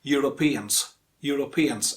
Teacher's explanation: make sure that stress falls on the penultimate syllable penultimate means second last syllable